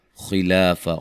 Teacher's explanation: خا کو موٹا ادا کریں گے